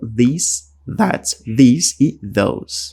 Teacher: Basicamente, a língua que vai nos dentes, tá? Nos dentes de cima.